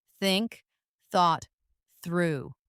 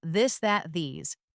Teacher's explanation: For example, the th sound in think or this. Put your tongue between your teeth and push air out for think. For this, your tongue touches the same position, but with your voice turned on.